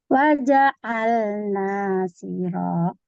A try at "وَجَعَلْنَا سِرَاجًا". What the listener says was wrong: Apa rendah ya? Ditinggikan boleh Bu. Coba ditinggikan bisa gak?